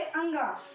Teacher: जो वर्ण उच्चारित होते हैं जैसे हमारे क वर्ग से अंगा जब हम अंग बोलेंगे तो उसमें नाक से भी वायु प्रवाहित होगी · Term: नासिका